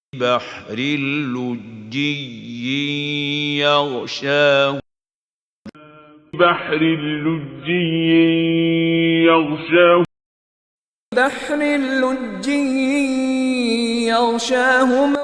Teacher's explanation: درمیان میں 2 یا آ رہے ہیں اور ان دونوں کا تلفظ کرنا لازم ہے، ایسا نہ ہو کہ ایک یا رہ جائے